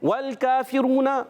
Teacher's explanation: والکافرون، واو کی ادائیگی، واو کو لام سے ملانا ہے، لام کو ہلانا نہیں. کاف پر کھڑا زبر ہے، ایک الف کھینچنا ہے، فا کے نیچے زیر، حرکت نہیں کھینچیں گے.